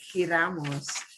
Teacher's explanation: It's a very throaty J.